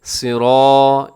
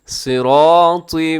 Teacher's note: آپ نے سب کو موٹا پڑھنا ہے، صاد بھی، را بھی، را کو لمبا کرنا ہے، اس کے ساتھ الف ہے